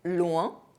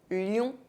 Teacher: OIN are pronounced [wε̃], but ION are pronounced [jɔ̃].